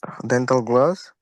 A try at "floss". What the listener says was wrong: Floss with an F. Floss.